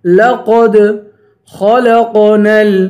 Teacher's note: خا کو پر پڑھیں گے اور یہ قاف ہے، اس قاف کو بھی پر پڑھیں گے